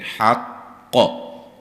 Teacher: وقف کی صورت میں قاف پہ خوب قلقلہ کریں گے